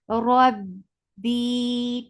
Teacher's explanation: For fatha and jaws attached with ba. Ba will get sifa of shidda, and the sound will cut off abruptly